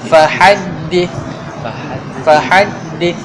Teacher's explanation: Jangan tukar kepada sin. Jangan fahaddis. Tu salah.